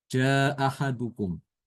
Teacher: Imam Ibnu Katir untuk Albazi dia menghilangkan hamzah yang ee yang pertama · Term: menghilangkan hamzah yang pertama